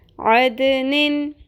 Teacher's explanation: اس میں بھی قلقلہ آپ نے کرنا ہے دال ساکن کے اوپر